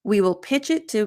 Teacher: because of the linking with pitch it, I find that I don't reduce to as much in this particular example